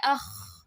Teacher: خا میں اخ، خراٹوں کی آواز آتی ہے، سنورٹنگ ساؤنڈ